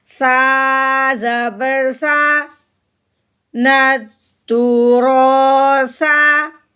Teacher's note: آگے ہے سا کو ہم نے نرمی سے ادا کرنا ہے. سا کو سختی سے آواز نہیں نکالنی اور اس کی سیٹی کی آواز نہیں نکالنی. اوپر والے دانت اور نیچے والے دانتوں کے درمیان ہلکی سی زبان کی نوک کو باہر لے کے آئیں گے.